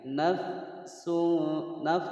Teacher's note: Naf ada fa sukun dibaca hamas. Naf ada anginnya.